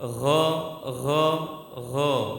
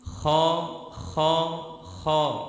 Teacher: Jadi tadi tidak boleh dihembuskan huruf ghain karena nanti akan cenderung sama dengan huruf kha.